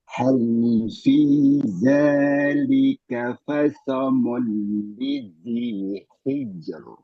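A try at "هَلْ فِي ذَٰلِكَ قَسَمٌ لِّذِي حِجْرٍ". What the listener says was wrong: Jelaskan qafnya, sempurnakan qaf. Qasamun. Ya, roknya tipis, tajamkan haknya. Rok tipis, tajamkan haknya. Hijr. Ya, tapi haknya kurang tajam. Hijr. Ya, kurang tajam.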